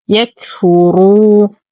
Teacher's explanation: واو ساكنة ما قبلها مضموم فهو مد طبيعي بمقدار حركتين